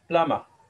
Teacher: And R coming at the end, R will be silent in British English. We'll see it why it will be silent.